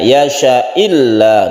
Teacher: Hamzah yang dibaca kasrah kemudian syanya otomatis tidak panjang jadi ini bukan mad Ya syaila bukan tapi ini pendek saja